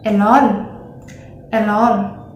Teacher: in Thai accent, the R letter in every single word is replaced by L.